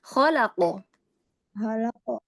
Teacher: Jadi tidak di khalaqo ya, tidak ditambahkan hamzah sukun di akhir ya. Hati-hati kalau kita tambahkan hamzah di akhir, itu menjadi Khalaqa. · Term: qalqalah